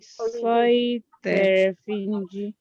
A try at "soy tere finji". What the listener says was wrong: So it's soy tere. So again, that should be rising. So it's soy tere finji.